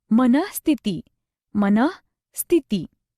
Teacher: विसर्ग का उच्चारण ह ऐसा होता है, जैसे मनः स्थिति, मनः स्थिति।